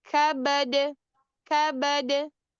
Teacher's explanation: Kalau dia di tengah-tengah itu ketika wasal itu ee itu qalqalah sugra. Ketika dia waqaf qalqalah kubra maka lebih kuat qalqalah kubranya.